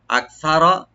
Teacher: Fine কানু আকসারা, আকসারা মিন যালিকা, আকসারা মানে যদি, এখানটা উপরে যে বলছে যে একজন ভাই বা একজন বোন থাকলে, এখানে বলতে চান রব্বুল আলামিন যদি একের অধিক থাকে, তখন কি হবে? আকসারা, কাফটাকে এখানে আমরা হামস করবো, সাটাকে ওপেন রাখবেন, রাটাকে আমরা ডিপ করে পড়বো,